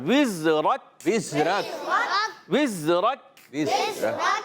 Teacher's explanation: کاف بھی پر ہو جاتا ہے، اس سے بچنا ہے کہ را پر کرنی ہے، کاف کو باریک پڑھنا